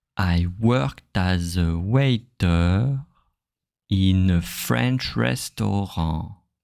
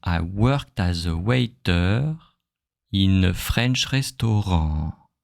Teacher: And here, now, when I divide it clearly, I pause after the first group and I make the last syllable, the last beat, longer.